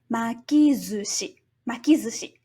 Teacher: the first consonant of the latter part of the word changes from voiceless to voiced. That's why the su becomes zu, and we get makizushi, makizushi.